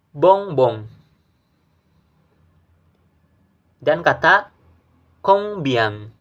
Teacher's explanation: Untuk pengucapannya yaitu huruf O diikuti dengan suara sengau.